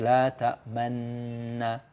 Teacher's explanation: Pasti mulutnya maju ke depan seperti dia mau mengucapkan dhammah. Tapi ini hanya isyarat saja, dia tidak mengubah bacaan. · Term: ismam